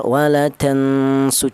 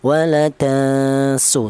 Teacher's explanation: tidak terlalu dengung juga tidak terlalu samar